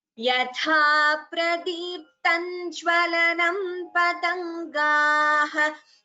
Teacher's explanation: you can combine the sandhi and chant it as yatha pradiptam jwalanam patangaha instead of chanting the anuswara completely